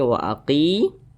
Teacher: Ketika kita membaca Al-Quran, apabila berjumpa dengan huruf ya sukun, kemudian di belakang huruf ya sukun, apabila dia hurufnya berbaris ke bawah, maka dibaca panjang. Huruf qaf dibaca panjang karena dia berbaris ke bawah dan posisinya tepat berada di belakang huruf ya sukun. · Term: mat tabi'i